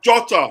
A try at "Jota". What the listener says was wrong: Actually, it's his in his native language. The J is pronounced H. The same way like Jesus. It's not Jesus.